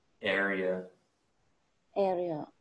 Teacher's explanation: the pronunciation of area you want to emphasize the first syllable